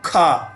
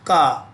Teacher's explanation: खा में ज्यादा हवा निकली और का में कम निकली